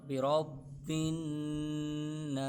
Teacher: برب پر قلقلہ ہو رہا ہے جمع والا، کیونکہ مشدد حروف ہے، جمع والا قلقلہ ہو رہا ہے، تو اس لیے ہم تھوڑا ادھر رک کر برب الناس، بن پر نون مشدد کا غنہ ہو رہا ہے، غنے کی مقدار ایک الف کی مقدار کے برابر ہے۔